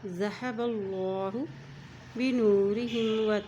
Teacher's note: اللہ کے نام کے ساتھ پہلے زبر آئی ہے اس لیے اللہ کا نام ہم موٹا پڑھیں گے